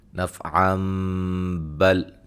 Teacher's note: تو یہاں ملانے کی صورت میں نون تنوین کا اقلاب ہوگا